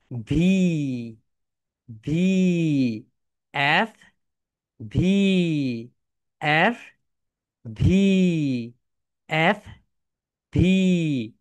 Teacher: ভি যখন উচ্চারণ করবে উপরের দাঁত নিচের ঠোটের সঙ্গে হালকা টাচ করবে